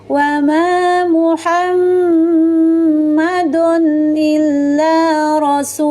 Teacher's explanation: menyempurnakan sifat tawassutnya ya, antara mengalir dan tertahan suaranya